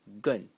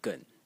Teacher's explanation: The first way to pronounce it is gun in the fourth tone and the second way is gun in the third tone.